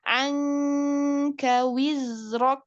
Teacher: Ya, maka nun sukun disamarkan ke dalam huruf kaf. Angka, kalau ikhfa yang bertemu dengan huruf kaf ini langsung ang, tapi tipis.